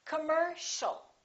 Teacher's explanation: the second syllable is stressed. The O and the IA are both reduced. So it's not com or calm, it's cum.